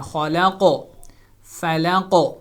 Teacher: قوف کی آواز پہ گونج پیدا ہوگی، ایکو ساؤنڈ آئے گی، اس کو قلقلہ کہتے ہیں